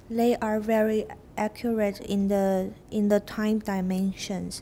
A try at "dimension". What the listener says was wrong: Okay, dimension is not wrong. I say di. It's more common in British to say di.